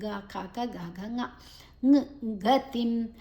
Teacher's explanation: ಅನುಸ್ವರದ ನಂತರ ಗಾ ಇದೆ, ಅದರಿಂದಾಗಿ ಅಲ್ಲಿ ಂಗ್ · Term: ಅನುಸ್ವರದ ಉಚ್ಚಾರಣೆ